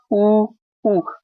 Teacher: तो आपके जो होठ है ना, ओष्ठ मतलब होठ ही होते, वो होठ एकदम से गोल हो जाते